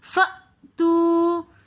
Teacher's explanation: واو ساکن اور اس سے پہلے پیش آ رہا ہے تو واو مدہ ہونے کی وجہ سے ہم اس کو بھی تھوڑا سا کھینچ کر پڑھیں گے